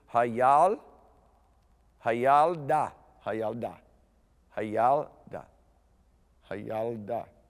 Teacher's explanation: when you have the schwa in the middle of a word like that, it's not pronounced, it's silent.